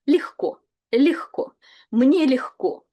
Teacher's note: please pay attention to pronunciation where G is pronounced as H